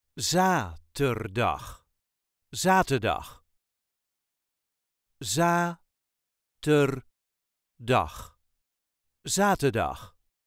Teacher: the first syllable gets The emphasis